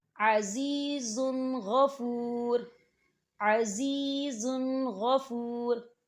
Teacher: عزیز غفور، عزیز غفور، زا کے پر تنوین ہے اور تنوین کے بعد غین آ رہا ہے، تو یہاں پر بھی اظہار ہوگا